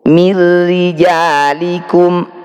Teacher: Nun sukun bertemu ro, bacaan idgham bila gunnah. Bunyi nun sukun dimasukkan pada ro, tidak usah dengung.